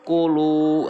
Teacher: kunya pendek, lu itu panjang, dua harokat, namanya mad tobi'i karena di situ ada waw mati yang sebelumnya berharokat domah.